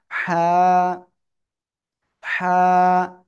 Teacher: হা গলাটা চেপে উচ্চারণ করতে হবে এবং এক আলিফ টেনে পড়তে হবে